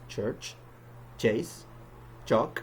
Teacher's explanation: it is made by combining the t and sh sounds, which results in a non-voiced sound